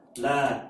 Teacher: یہاں چھوٹی مد ہے کیونکہ 3 الف کے برابر اس کو کھینچنا ہے۔